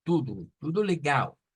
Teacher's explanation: la transliteración nos dice que lo Digamos como tudo pero realmente no es una o son dos u la que vamos a usar acá